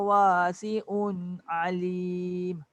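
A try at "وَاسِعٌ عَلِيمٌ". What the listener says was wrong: sebut alim tu, ain tu cantik. Wasi'un tu dia tak masuk. Dia kena sama macam alim.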